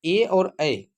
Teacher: ए और ऐ के उच्चारण में हमको कंठ और तालो दोनों का उपयोग करना पड़ता है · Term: कंठ तालव्य वर्ण